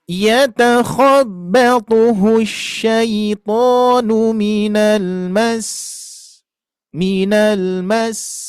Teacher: ada penekanan atau ada dorongan naik ya, itu untuk menunjukkan bahwa bertasydid